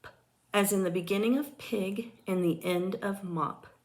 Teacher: A bilabial sound is one which is produced by bringing both lips together. P is an unvoiced bilabial stop consonant.